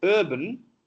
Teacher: centrally produced using the central part of the tongue, and central part of the tongue is risen towards the hard palate · Both are substituted with a sound that Telugu has, that is we say urban, urban, but it's in English urban, because R is dropped in the English language. In non-rhotic language, it is dropped. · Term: central sound